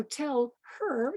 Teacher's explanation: it's just realizing that words are linked. So tell, her just runs together.